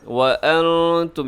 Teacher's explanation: وَلَا تَحْزَنُوا، آگے وَأَنْتُمُ الْأَعْلَوْنَ، وَأَنْتُم، یہاں نون ساکن ہے، نون ساکن کے بعد تا ہے تو یہاں تو ہو گیا اخفا